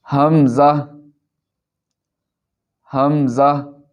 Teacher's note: حمزہ بھی حلق کے نیچے والے حصہ سے ادا ہوتا ہے۔